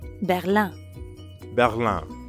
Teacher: Berlin ends in IN, which in French becomes Another nasal sound.